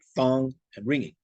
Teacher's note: there is no G sound at the end of these words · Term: the enigma